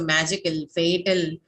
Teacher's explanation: all the stress falls on your first syllable